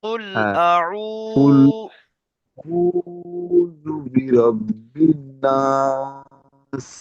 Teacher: এখানে একটা জিনিস দেখবেন, হামজা জাবার আ, আইন ওয়াও পেশ উ, এটা কিন্তু ওয়াও মাদ্দার পড়া আছে, ওয়াও সাকিনের ডান দিকে পেশ আছে, ওয়াও মাদ্দার পড়া, তাহলে একালি পরিমাণ টান দিতে হবে